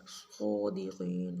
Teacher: صاد قاف موٹا پڑھیں گے